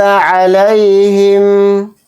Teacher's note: انعمتا یہاں پر نون کو ظاہر کر کے پڑھیں گے، اسی طرح سے میم کو بھی یہاں پر ظاہر کر کے پڑھیں گے. علیہم میں لام یا زبر لئی میں یا لین یعنی کہ حروف لین ہو رہا ہے تو اس لیے لئی کو ایک دم پڑھیں گے